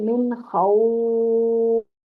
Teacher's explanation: عارضی طور پر لین پر مد کیا جائے گا حرف لین پر، اس لیے اس کو مد عارض لین کہتے ہیں